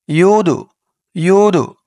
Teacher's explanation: এই দালটা হচ্ছে কলকলার হরফ ধাক্কা দিয়ে পড়তে হবে